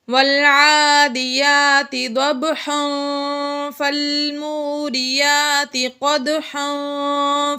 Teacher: ناظرین، اگر ہم یہاں پر چاہیں تو وقف بھی کر سکتے ہیں اور ملا کر بھی پڑھ سکتے ہیں۔ ملا کر پڑھیں گے تو پھر یہاں پر غنہ ہوگا، کیونکہ تنوین کے بعد آگے فا آ جائے گا حروف اخفا میں سے، اس لیے یہاں پر غنہ ہوگا۔